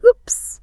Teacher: The English W is what linguists call a labial approximate. That means your lips are soft, they are round, your mouth is slightly open, and there is absolutely no friction whatsoever.